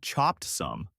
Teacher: the t sound at the end of chopped blends into the s of some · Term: connected speech